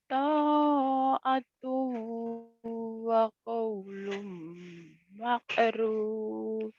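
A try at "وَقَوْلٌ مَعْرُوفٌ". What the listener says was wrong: jangan makrub, ma'ruf ya. Lagi jangan makrub, ma'ruf. Orang Jawa ka-nya ke ain, teh ke ka ya jangan. Ma'ruf. Amin ma'ruf bukan ma'ruf. Wakau. kau. Ayo kau.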